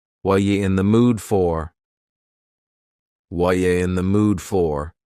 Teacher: The word are is gone, and the word you has been reduced to ya.